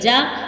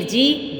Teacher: یہ جیم، شین، یا ان کا ایک ہی مخرج ہے، زبان کا درمیان اور تالو کے درمیان سے ادا ہوں گے